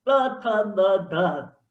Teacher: દાંતની પાછળ જીભ લગાડશો જેને દંત્ય કહેવાય